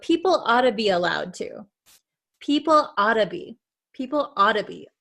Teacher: this double T here becomes a flap T which sounds like a D sound